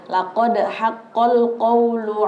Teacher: Dalnya itu harus dipantulkan karena itu qalqalah.